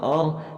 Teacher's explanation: حمزے کے بعد را کو ہم نے موٹا پڑھنا ہے